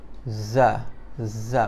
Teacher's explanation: Hujung lidah dia berada di belakang gigi bawah. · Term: huruf zai